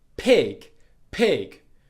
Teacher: And just a point to be aware of, if you put your hand on your throat and when you say pig, your voice box vibrates, it's probably vibrating on the I part of the word, but the actual P sound itself doesn't vibrate.